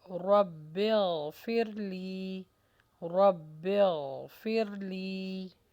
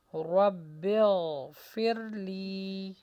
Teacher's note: رو کو موٹا کیجیے اور غین کی آواز کو چلنے دیجیے